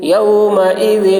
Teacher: ذال باریک ہوگی، ذال میں اظہار ہوگا، تنوین کو جلد ادا کریں گے